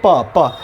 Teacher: प बोलते हैं तो हमारी ओठ एक दूसरे के ऊपर सटती है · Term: ओष्ठ